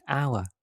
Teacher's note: The starting letter is 'h' but 'h' is silent that's why the first sound is /aʊə/. It's a vowel sound